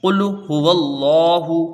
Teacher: واو کو لام سے ملائیں گے، لفظ اللہ سے پہلے زبر ہے تو لفظ اللہ کا لام پر ہوگا، اور لام کو ایک الف کی مقدار کھینچ کے پڑھیں گے کیونکہ اس میں کھڑا زبر ہے۔